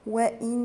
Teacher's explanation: وإن هنا النون مشددة تبقى غنة بمقدار حركتين